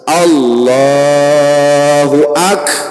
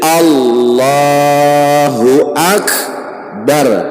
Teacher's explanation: Kaf itu ada qalqalah sugro ngarannya.